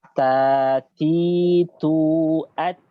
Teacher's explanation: Huruf ta keluar dari punggung ujung lidah. Punggung ujung lidah pada posisi pangkal dua gigi seri. Pangkal. Jangan di tengah gigi seri tapi di pangkalnya.